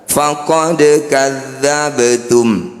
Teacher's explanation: Qalqalah artinya memantul, sugro artinya kecil. Bunyi dal dan bunyi ba ini kita pantulkan tapi jangan berlebihan. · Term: qalqalah sugro